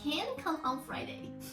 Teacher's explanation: When you can hear CAN very clearly, basically that is a negative answer